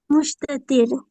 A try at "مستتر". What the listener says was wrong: شین نہیں ہے، سین ہے. مستتر. ڈیئر شین نہیں ہے ماں، سین ہے، سین ہے یہاں پر. مستتر.